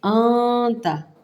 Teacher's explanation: اخفا کرنا ہے۔ نون کے آواز کو چھپانا ہے ناک کے بانسے میں